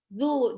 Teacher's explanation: Dhammah ketemu sama waw sukun. Zu dibaca 2 harokat.